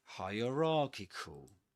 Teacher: the main difference between the word hierarchy and this one, hierarchical, is that the main stress goes on rarchical, ra.